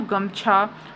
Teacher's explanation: तो गले में वाइब्रेशन फील होता है। · तो घोष में क्या होता है कि अह जब हम प्रोनाउंसिएशन करते हैं घोष में जो शब्द होते हैं जो वाले तो उसमें जो गले में ना वाइब्रेशनंस समझ में आता है मतलब वाइब्रेट होता है गला बोलने में।